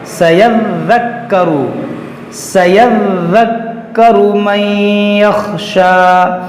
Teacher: سيذكر دیکھیے یہاں پر دو حرف مشدد ہے, ذال اور کاف, اس کو پڑھیں گے دو بار